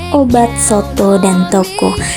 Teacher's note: Yang kesembilan ada vokal O dengan proses pembentukan tengah atas belakang bundar